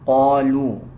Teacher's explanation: قاف کو پر یعنی موٹا پڑھا جائے گا